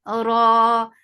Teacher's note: Ra is heavy. Whenever ra is with fatha or dhamma, it is heavy. And it is 2 counts long here.